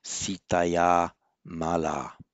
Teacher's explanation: you got the long ah ah with visarga before a voiced consonant divisarga drops so that becomes sitaya Mala so in since in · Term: The visarga drops